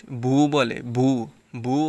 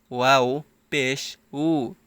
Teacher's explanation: ঠোঁটটা গোল করে ভিতর থেকে একটু বাতাস বের হবে